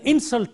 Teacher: when you use this word as a noun the stress is on the first syllable